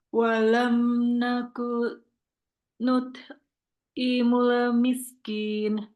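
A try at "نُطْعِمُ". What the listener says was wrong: Nah, kalau qalqalah gimana? Bukan nut. Bukan ya, nut. Dia bukan hams, tapi dia qalqalah. Nut'imu. Kalau kita bacanya nut, itu berarti hams. Ini qalqalah, memang huruf to-nya yang mantul, yang kembali. Nuto.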